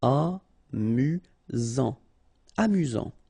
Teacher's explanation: Final T not pronounced. You've got only one S here between the vowels, so it's really this Z sound.